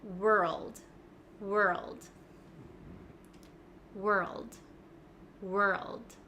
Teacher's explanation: we kind of skip over the W and go straight to R